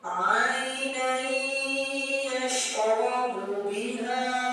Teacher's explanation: didengungkan selama 2 harakat atau 2 betokan. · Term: idgham bi ghunnah